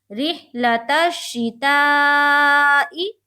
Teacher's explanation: یہاں پر مد بن رہا ہے، 3 سے 4 الف کے بقدر ہم کھینچیں گے